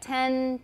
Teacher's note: Whereas the N in ten is usually what? Alveolar, so we're just touching the alveolar ridge for 10 because there's no th there to make us want to stick out our tongue